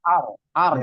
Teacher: getarnya huruf ro itu nggak boleh banyak-banyak · Kalau bisa tuh cuma 2 kali atau nggak lebih dari 3 kali bergetar. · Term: takrir